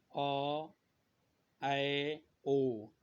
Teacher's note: वह स्वर जिसके उच्चारण में क्या होता है, आधा मुंह खुलता है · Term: अर्ध विवृत स्वर